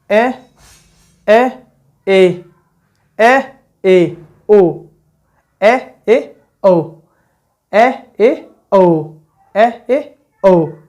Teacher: संपूर्ण मुख खुला रहे। अर्धविव्रत में क्या होगा? तो आधा मुख खुला रहे ना, आधा मुख खुला रहे।